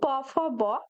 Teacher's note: next দেখো আছে প, ফ, ব, এগুলো কিন্তু ওষ্ঠ বা ঠোঁট থেকে উচ্চারিত হয়, তাই এগুলোকে ওষ্ঠধ্বনি বলা হয়